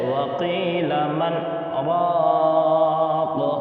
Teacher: ہم نون پر آواز کو روک دیں گے اور سانس کو جاری رکھیں گے ، یعنی سانس بند نہیں ہوگی، سانس چلتی رہے گی اور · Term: سکتہ